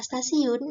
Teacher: dalam kata stasiun diucapkan secara lamino-alveolar T. Perubahan letup apikodental T menjadi letup almino-alveolar T karena pengaruh secara progresif dari bunyi geseran lamino-alveolar S.